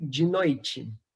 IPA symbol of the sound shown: t͡ʃ